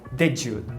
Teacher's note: Quando você disser why did you, eu quero que você palatalize.